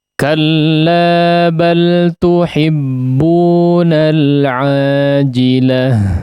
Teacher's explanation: Di situ diakhiri dengan ta' marbutah, seperti yang kita ketahui ta' marbutah ketika diwakafkan ya, maka dia berubah menjadi ha ya, berubah menjadi pengucapannya menjadi ha ya